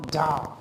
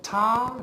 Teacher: in da we have vibration, in ta we do not have any vibration